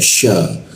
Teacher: ketika dibaca sya, rongga udara yang terbuka sehingga ada hembusannya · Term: huruf sya